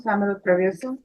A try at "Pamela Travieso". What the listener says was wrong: Okay, you didn't pronounce all of the vowels.